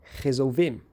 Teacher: nesse dialeto específico de português brasileiro, nós encontramos essa fricativa surda